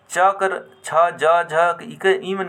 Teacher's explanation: तालू के जीभ स्पर्श करेला और उच्चारण निकले ला तो इकर उच्चारण स्थान तालब हो जाएला ट वर्ग ट में